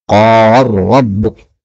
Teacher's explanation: Kemudian ayat 21, qala rabbuka. Ini lam ketemu ra, bisa idgham menjadi qala rabbuk.